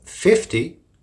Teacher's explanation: the stresses on the first syllable · the difference is in the stress and the short and long e